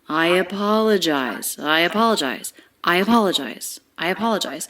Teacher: the intonation is smooth we don't have skips it scoops up the voice scoops up and then it comes back down i apologize i apologize i apologize i apologize linked together smoothly · Linked together smoothly, we have a vowel-to-vowel link here with a diphthong I, linking right into the schwa of apologize. In a link like this, when it's an I diphthong linking into another word that begins with a vowel or a diphthong, you can think of connecting them with a Y sound.